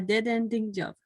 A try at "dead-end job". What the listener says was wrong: A dead-end job. A dead end. Not a dead ending.